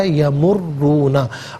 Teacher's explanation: रा पर तशदीद भी है, इसे जमाओं के साथ पढ़ेंगे, रा पर पेश भी है, इसे पुर करके पढ़ा जाएगा